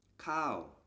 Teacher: a high-class consonant combined with this tone marker produces the falling tone. So this word is pronounced khao.